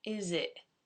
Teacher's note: It's not entirely gone. It gets what I call a glottal catch. Not quite glottal stop, like in Cockney.